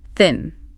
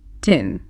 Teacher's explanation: Tongue between teeth for the first behind teeth for the second.